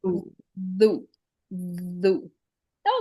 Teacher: tip of the tongue comes out, vibrates, and it's a heavy letter, no sizzle